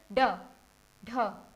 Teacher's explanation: आपकी जीभ एकदम से ऊपर वाले जो छत का हिस्सा है उसको टच करके और एकदम वापस आती है। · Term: उत्क्षिप्त व्यंजन